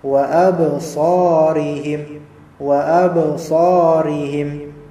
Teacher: wa ab di sini ba mati, dia qalqalah